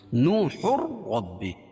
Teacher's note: را کو پر پڑھیں گے کیونکہ رائے مشددہ کے اوپر زبر یا پیش ہو تو را کو پر پڑھتے ہیں